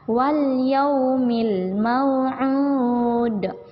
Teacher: Ini lam bukan huruf qalqalah. Jadi lam ini tidak boleh dipantulkan sedikit pun. Jadi cara bacanya wal yaumil mau'ud.